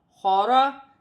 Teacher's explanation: را پر زبر کی حرکت ہے تو را موٹی پڑی جائے گی. خا زبر خا، را زبر را، خارا.